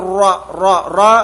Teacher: റ തഫ്ഹീം ഉള്ള അക്ഷരമാണ് അഥവാ സ്വരഭാരത്തോടുകൂടി പറയണം